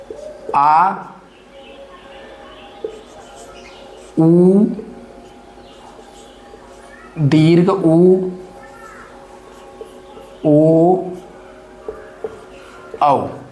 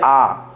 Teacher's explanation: हम लोग आ ऐसे बोलेंगे आ तो कौन सा पश्च स्वर पश्च भाग जो जीभ का पिछला वाला भाग है वो काम कर रहा है